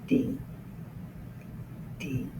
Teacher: Now, on this letter, we actually use our tongue a little. It's at the roof of the mouth, not completely, but touching and not a lot of pressure.